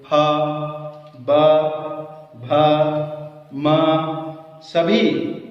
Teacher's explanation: ओठ दोनों स्पर्श हो रहे हैं, इसीलिए इनका उच्चारण स्थान है ओष्ठ, लिप्स